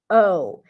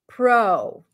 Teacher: it's not a pure oo sound it's a bit more open but for our purposes imagine like you're adding a w at the end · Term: O as in go